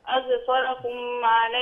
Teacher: اظفركم عليهم ميم ساكنه مظهره اظفركم عليهم لا لا ما تعمليش فيها غنه اظفركم عليهم اظفركم